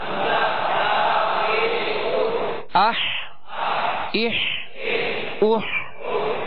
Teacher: ہا کو وسط حلق سے ادا کرنا ہے. یعنی ہا اور ہا میں فرق کرنا ہے.